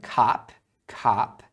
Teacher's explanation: e pode ser o também tá então não tem problema mas eu tô acostumado a falar Cap com o som de a mais aberto